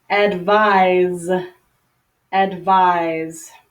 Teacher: the verb form is with an S but the pronunciation sounds like Z